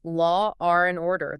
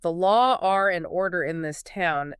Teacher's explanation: speakers will literally insert a hard R sound